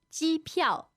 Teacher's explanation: first tone, fourth tone